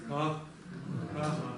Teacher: Это как, почти что как «к», но произнесенная низким тоном. Получается «ка».